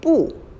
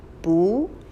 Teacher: Now, in terms of the pronunciation, this one is a little tricky because when you use it in front of a falling tone, like I'm not, you need to change the tone from the falling tone 不 to a rising tone 不.